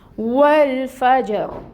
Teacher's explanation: لام ساکن ہے، اس کو ہلانا نہیں ہے، اس میں توسط آئے گا، یعنی لام کے مخرج پہ آواز جاری رہے گی · واو سب سے پہلے آ رہا ہے، جس کے لیے اپنے ہونٹوں کو ہمیں مکمل طور پر گول کرنا ہے۔ ہونٹ گول کریں گے واو کی ادائیگی کے لیے، اور پھر واو کے اوپر فتحہ کی حرکت ہے۔ · فا میں ہمس ہوتی ہے، یہ اس کی صفت ہے۔